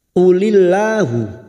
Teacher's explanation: lam jalalah yang didahului kasr kita baca tarkik atau tipis